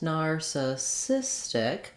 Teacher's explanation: easily in your everyday speech so narcissistic has four syllables narcissistic you hear how i lengthen and stretch on the cis syllable this is the stress syllable and it has a clear vowel that means the other syllables are going to go by